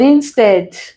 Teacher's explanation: this is a prefix. So we stress the second syllable.